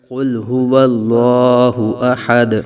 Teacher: تو وقف ہونے کی وجہ سے دال ساکن میں قلقلہ کریں گے